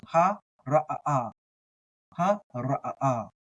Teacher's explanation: I treat the ayin kind of like a guttural stop, like the okina in Hawaiian